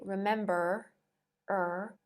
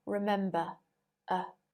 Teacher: in received pronunciation if a word ends with r the r is not pronounced